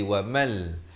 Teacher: Ma'aisha wa mal. Di sini idgham bila gunnah, masuk tanpa dengung. Daripada wa man jadi wa mal.